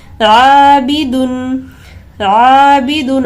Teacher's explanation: الف سے پہلے باریک حرف ہے، لہٰذا اس الف کو باریک پڑھیں گے